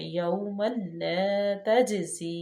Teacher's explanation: اور لین کو نرمی سے صرف پڑھا جاتا ہے، اس کو لمبا نہیں کیا جاتا واو لین کو